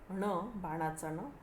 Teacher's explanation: ण, बाणाचा ण, त्याचं उच्चारण स्थान आहे कठीण टाळू, ज्याला आपण मूर्धा असं देखील म्हणतो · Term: अनुनासिक व्यंजनं